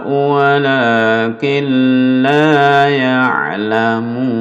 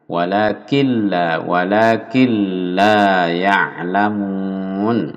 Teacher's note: nun sukun bertemu lam, ini masuk nunnya hilang, lalu tanpa mendengung idgham, apa idgham bila gunah atau idgham bi ghairi gunah, itu tajwidnya.